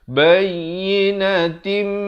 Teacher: Di sini hukumnya idgham bi gunnah. Daripada bayyinatin jadi bayyinatim dengan 2 harakat dengung.